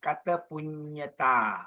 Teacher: Don't pause at kata. There's no double T. So it should be kata punyata.